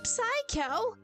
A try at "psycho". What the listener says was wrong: A sicko, you mean? You don't pronounce the P.